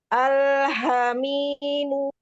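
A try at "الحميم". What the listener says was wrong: Mu. Sampai U-nya terdengar. Al-hamimu.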